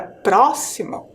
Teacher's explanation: a sílaba mais forte é a sílaba pro e ela está ali na antepenúltima sílaba percebo ali em vermelhinho